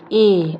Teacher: कंठ और तालव्य दोनों को मिलाकर ये बनता है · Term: कंठ तालव्य